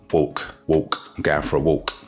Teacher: the L in the middle of a word can be pronounced with a W sound. So for example, the word walk will become walk, walk, I'm going for a walk.